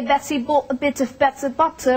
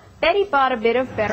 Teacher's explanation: the Americans flap the T sound you know it sounds like an almost dare sound and not